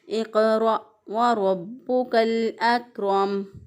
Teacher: रा के ऊपर ज़बर या पेश हो तो रा को मोटा पढ़ते हैं। बा जो है इसको उसके ऊपर शद है, इसको मज़बूत क़ुव्वत से पढ़ेंगे।